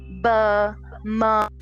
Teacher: So bilabial is two, and labial is lips. And both the lips come together, this sound is produced.